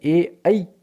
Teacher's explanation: ए और ऐ इनका उच्चारण स्थान होता है कंठ तालु, इसलिए इन्हें कंठ तालव्य वर्ण कहा जाता है